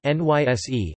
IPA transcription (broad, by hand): nysːe